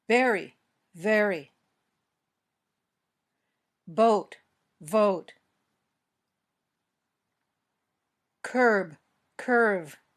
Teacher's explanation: Pay attention to the position of your lips and teeth. Both lips together for b, but your top teeth touching your bottom lip for v.